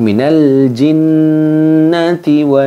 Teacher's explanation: Nun tasdidnya pada jinnati sama wanas itu didengungkan kemudian ditahan